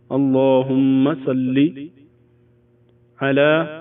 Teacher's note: یہ وسط حلق سے ادا ہوتا ہے عین